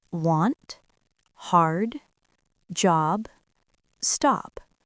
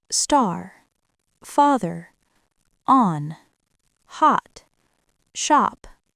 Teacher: This is the deep ah sound. The tongue stays low and back, and the sound feels open and rich. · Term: deep a sound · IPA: ɑ